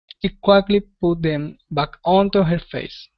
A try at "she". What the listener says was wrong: All right, now let's practice the SH sound as well. Instead of saying C, it's she. She quickly put them back onto her face.